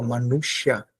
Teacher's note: manusha, o S vai tocar o céu da boca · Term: S cerebral